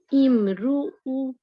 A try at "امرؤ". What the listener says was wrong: नहीं, ध्यान से देखें, हमजा के ऊपर कौन सा साइन है? नहीं, तनवीन है,